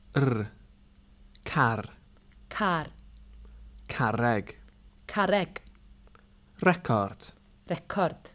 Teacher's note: R is rolled in Welsh, but don't overdo it.